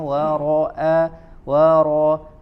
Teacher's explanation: Dilatih huruf ro-nya tebal ya, seperti di ayat sebelumnya juga tadi dibaca tebal